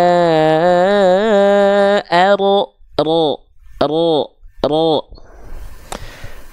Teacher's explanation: Jadi kalau dihitung-hitung tuh getarannya paling cuman satu sampai dua getaran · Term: huruf ro